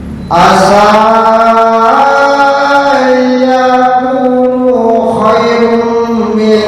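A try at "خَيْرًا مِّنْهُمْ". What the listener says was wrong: Khairan, ron, bukan rum. khairam minhum, bukan khairum.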